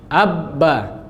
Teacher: Ba bibir nempel kuat.